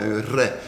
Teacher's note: le R se prononçait un R dental, un R, avec le bout de la langue. Alors, comme un L, mais on fait vibrer la langue, un R.